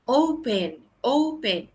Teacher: la fuerza está al inicio, en la O